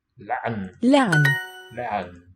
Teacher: this ein is sometimes regarded as a stop, sometimes as a fricative. It's really indeterminate. It's a stop fricative.